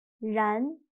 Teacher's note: shape of your mouth is wrong in the beginning run run but in chinese when pronouncing run your mouth is not round at all it's a little bit stretched